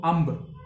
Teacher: ਅੰਬ ਬੋਲਦੇ ਹੋਏ ਅਲਫ ਤੇ ਬੇ ਦੇ ਵਿੱਚ ਮੀਮ ਪੈ ਰਿਹਾ ਜੋ ਕਿ ਪੂਰਾ ਆਵਾਜ਼ ਆਪਣੀ ਸਾਊਂਡ ਪ੍ਰੋਡਿਊਸ ਨਹੀਂ ਕਰ ਰਿਹਾ, ਉਹ ਅਚਾਨਕ ਥੋੜੀ ਸਾਊਂਡ ਪ੍ਰੋਡਿਊਸ ਕਰ ਰਿਹਾ।